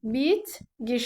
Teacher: Yəni 2 dənə kar samit yanaşı gəlib, ikincisi cingiltiliyə keçdi.